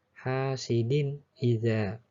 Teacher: tanwin bertemu alif dibaca ijhar, artinya jelas.